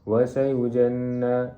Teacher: Nun itu merupakan wajibul ghunnah kerana ia bertasydid. Maka perlu dibaca dengan dengung dua harakat. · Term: wajibul gunnah